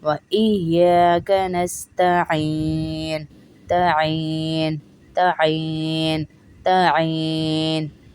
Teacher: این نہیں پڑھیں گے، عین کی آواز آئے گی